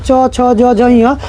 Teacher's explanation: च वर्ग जो है उसको तालव्य से जब च अक्षर बोलिएगा ना च छ ज झ ञ तो आपका जो जीभ है ना तालु में जाके सट रहा होगा